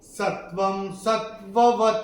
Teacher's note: चौथे चरण में व के ऊपर अनुस्वार के बाद का अक्षर है स, और अनुस्वार के बाद जब स आएगा तो अनुस्वार का उच्चारण होगा म